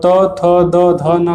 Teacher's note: और त थ द ध न का उच्चारण दंत से होता है